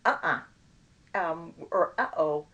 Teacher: you have that little stop in the middle it's not a sound it's a glottal stop